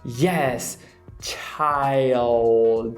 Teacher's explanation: o L em inglês, que ele é sempre meladinho lá em cima, é o que a gente chama de dark L